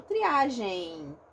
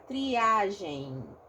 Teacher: Eu não falo triagem, eu falo triagem. Eu ditongo, vejam, eu crio uma vogal que não existe na escrita, na grafia da palavra, que é o I, né? E aí eu acabo criando aqui um ditongozinho, tá?